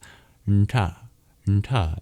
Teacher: it's your bottom of the tongue that taps against the hard palate to make the sounds nta, nta in ghanta